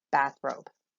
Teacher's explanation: a spondee as if they're both stressed